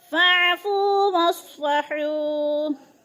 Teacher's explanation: फू पे वो मद्दा है, वो साकिन से पहले फ़ा के ऊपर पेश है, तो वो मद्दा एक अलिफ के बराबर खींच कर पढ़ना है। फ़अफ़ू वस्फ़हू, हू पे वो मद्दा, वो साकिन से पहले हा के ऊपर पेश है, तो वो मद्दा।